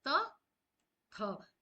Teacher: हमारी जीभ ना दांतों को टच करती है